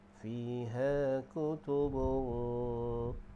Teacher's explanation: Dengung dia iaitu di bahagian pangkal lidah. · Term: ikhfa haqiqi